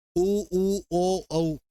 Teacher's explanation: ओष्ठ की आकृति के आधार पे 2, वर्ताकार और अवर्ताकार। वर्ताकार में तुम्हारा ओठ वर्त की तरह बनेगा, गोल, उ ऊ ओ औ, ये रहा।